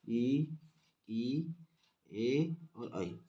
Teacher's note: करते समय स्वास वायु जो कि जीभ के केवल अग्र भाग को ही प्रभावित करे उसे हम अग्र स्वर कहते हैं और यह होते हैं आपके इ ए और आई।